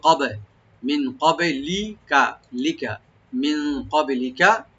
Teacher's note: ক্বাবলিকা, মিন ক্বাবলিকা, মিন নুন সাকিন এখানে আমরা ইখফা করব, এখানে ক্বাবলিকা কাফটাকে রাইট দিয়ে এখানে একটু ডিপ করে পড়বো, বাতে একটু হালকা কলকলা করব, ইকো করব , ক্বাবে, মিন ক্বাবলিকা, লিকা, মিন ক্বাবলিকা, এখানে কোনো টান নাই